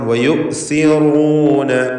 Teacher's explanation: നാവിൻ്റെ അറ്റത്തിൻ്റെ മുകൾ ഭാഗവും മേലെ മുൻപല്ലിൻ്റെ അറ്റവുമാണ് സഇൻ്റെ മഖ്റജ്. സി എന്ന് വ്യക്തമാക്കി ഉച്ചരിക്കണം.